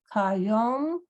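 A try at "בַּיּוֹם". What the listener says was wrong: Okay, this is bet. Bayom.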